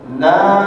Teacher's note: Nun tasydid harus ditahan 2 harokat. Kemudian natnya dipanjangkan 4 harokat.